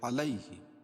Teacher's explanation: یا ساکن سے پہلے زبر ہے، اس لیے یا لین ہوگا، اس کو نرم آواز کے ساتھ جلدی پڑھیں گے